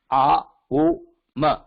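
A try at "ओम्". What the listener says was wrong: Not A. It is not A. O, Ma. A plus O.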